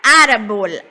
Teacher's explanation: ela vai ter acento, né, na sua penúltima sílaba, que é a sílaba tônica. E ela não termina com N, não termina com S, nem com nenhuma vogal.